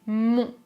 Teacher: Je prononce mont, les lèvres sont arrondies